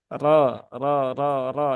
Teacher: Ra yang berharakat fathah maka dia dibaca dengan tafkhim ya dengan tebal